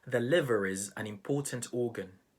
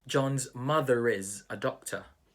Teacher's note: The linking R is where the R is pronounced if the next sound is a vowel sound.